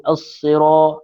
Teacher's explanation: huruf ra yang berbaris atas sebutannya adalah tebal. Kemudian ada alif kecil padanya iaitu mad asli panjang 2 harakat.